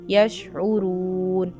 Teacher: आइन को निकालना है, रा को मोटा पढ़ेंगे और वाव मद्दा भी अदा करना